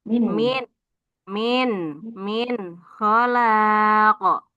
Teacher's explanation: jangan di min ko nunnya jelas · Nun sukun bertemu kho. Berarti dibaca jelas ya. Jelas. Penggorokan. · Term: dibaca izhar